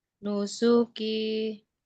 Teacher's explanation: Perhatikan su tidak akan dibaca panjang kalau di depannya tidak ada wau ya